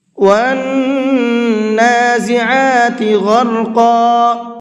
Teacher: غین کو بھی اور را کو بھی اور قاف کو بھی، تینوں کو منہ بھر کے پڑھنا ہے۔